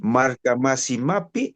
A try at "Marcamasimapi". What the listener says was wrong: Eso, solamente la pronunciación pi, alargando el vocal, ¿ya?